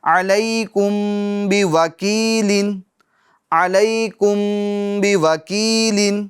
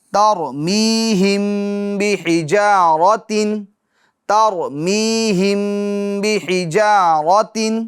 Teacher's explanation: اخفاء شفوی ہوگا، یعنی گنہ کر کے پڑھیں گے